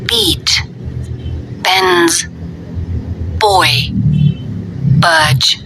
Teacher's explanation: Bibir atas dan bawah bersama menghasilkan bunyi.